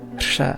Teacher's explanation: pronounced the word final ra as a voiceless fricated tap, rsha. To this day, I still tend to pronounce the word namtar, meaning hagiography, with this sound, and that's it.